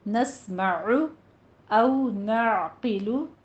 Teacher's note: नस्मअु औ नाक़िलु, क़ौफ को पुर पढ़ना है और लाम के ऊपर ज़म्मा है, होंठ गोल कीजिए